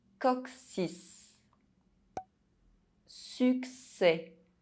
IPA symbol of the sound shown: ks